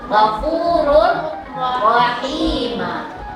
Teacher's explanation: Idgham bila guna baca tanpa mendengung.